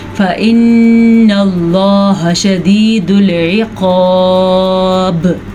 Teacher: با پہ ہو رہا ہے جناب قلقلہ, کیونکہ وقف کی وجہ سے با ہو گئی ساکن. قلقلہ کا قانون یہ ہے کہ جب کبھی قاف طوا بیا جیم دال ان 5 حروف میں سے کسی پہ ساکن یہ جزم آ جائے تو وہاں پہ جھٹکے کی کیفیت ہوگی, اسی کو قلقلہ کہتے ہیں.